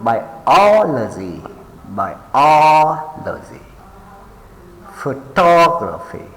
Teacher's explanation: place the stress on the third syllable from the end.